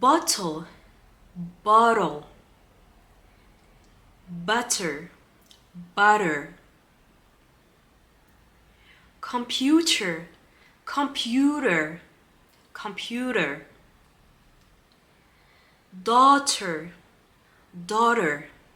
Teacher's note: every time we have the T we are going to pronounce it as an r or a d · Often the T becomes a D or an R.